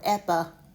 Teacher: It can have a schwa sound on that last vowel.